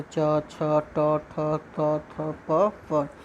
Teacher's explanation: Voice box हमारे स्वर तंत्रियाँ क्या होती है कंपन नहीं करती अर्थात झंकृत नहीं करती हैं, उनमें वाइब्रेशन नहीं आता है, तो उसको हम लोग बोलते हैं अघोष व्यंजन, ठीक है।